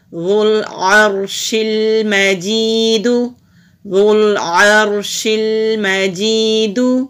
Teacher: ذال پیش لام ذو، عین زبر را ار، شین زیر لام شل، میم زبر ما، جیم زیر یا جی، دال پیش دو، ذو العرش المجید، ذو العرش المجید۔ را موٹا پڑھیں گے اور یا سے پہلے زیر ہے، حروف مدہ ہے تو ایک الف کے برابر لمبا کریں گے